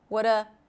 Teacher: we connect the what with the schwa sound. That is a reduction of R.